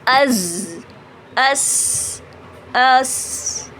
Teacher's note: हमारे दांत बंद हो जाते हैं और हमारी जबान की जो नोक होती है वो नीचे की साइड चली जाती है और वो नीचे के मसूड़ों की तरफ यानी जो सनाया सुफला है उसके मसूड़ों के ऊपर चली जाती है। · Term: सीटी वाले हुरूफ